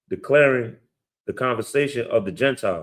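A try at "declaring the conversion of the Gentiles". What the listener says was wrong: Not conversation. Slow down.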